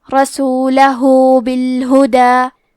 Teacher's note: کلمت رسولہ میں آخری میں ہا پہ الٹا پیش ہے، یہاں حکم ہے مد صلہ صغرا تو ہم اپنی آواز 2 مد کے برابر لمبی کریں گے